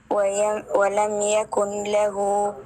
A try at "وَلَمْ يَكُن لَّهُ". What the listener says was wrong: يكن له نون. لا ننطق نون. هنا إدغام بلا غنة، إدغام بغير غنة. ولم يكن له نون إدغام في اللام. يكن.